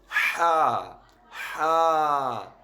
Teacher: ایک تو ہا حروف حلقی میں سے ہے، اور دوسری بات کہ اس کے اوپر کھڑی زبر ہے، زیادہ لمبا نہیں کریں گے، تو اس کی ادائیگی کیسے ہوگی، ہا، ہا، سمپل ہم اگر ہا پڑھیں گے تو یہ غلط ہے۔